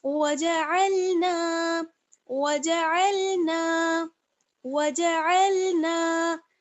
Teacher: نون میں آپ دیکھ رہے ہیں کہ الف مدہ جڑا ہوا ہے، اس لیے نون کو ہمیں تھوڑا سا کھینچنا ہوگا